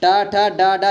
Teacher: टा, ठा, डा, डा, ये क्या होते हैं, मूर्धन्य होते हैं